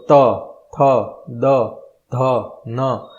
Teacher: હવે દાંત અને જીભ બંને, તો ત, થ, દ, ધ, ન. એટલે કે જે ઉપરની સાઈડના દાંત છે, ત્યાં ઉપરનો ભાગ છે, એની દાંતની ઉપરની સાઈડ તમારી જીભ અડશે.